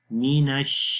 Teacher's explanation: اعوذ باللہ، اعوذ باللہ، اعوذ باللہ من الشیطان مینش، میم کے نیچے زیر ہے، می باریک آواز آئے گی، نون کو شین کے ساتھ ملائیں گے. نش، شین کی آواز منہ کے اندر پھیل جائے گی، پھیل کر آواز آئے گی منہ کے اندر